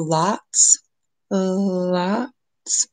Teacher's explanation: Your tongue is going to go up for the L, drop down for the A, and then go back up for the ts, where there's the slow air, release of air.